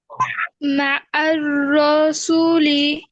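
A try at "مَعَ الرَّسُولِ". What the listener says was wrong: রতে টান হবে না আপু, আবার।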